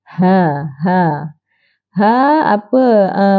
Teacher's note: sama dengan ni Samalah tempat keluarnya ha makhrajnya di Pangkal kerongkong tekan suara di Pangkal kerongkong kita boleh rasa getaran di Pangkal kerongkong